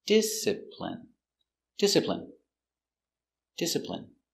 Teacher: stress on first syllable discipline